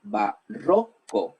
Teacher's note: Se dice barroco. La sílaba tónica es ro.